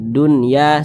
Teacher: alif lam syamsiyah sehingga cara membaca huruf lamnya ini diidghamkan jadi huruf lamnya ini dia tidak dibaca langsung masuk ke huruf dal